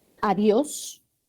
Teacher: la sílaba tónica es dios